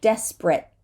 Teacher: we don't have to say the last T at all